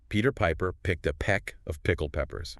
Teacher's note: This is all about the P and B sounds. It trains you to control the puff of air that comes with the P sound.